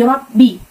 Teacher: Lalu ada ra tafhim di rabbi. Roknya berbaris dengan fathah, jadi bacanya tebal di pangkal lidah dan terangkat